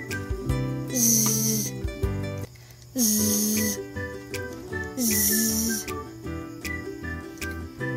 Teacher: Ang letrang Z ay isang fricative na may tunog sa parehong puntong panggilagid.